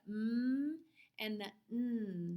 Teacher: comes out our nose and the um comes out our nose those sounds come out our nose and we call those nasals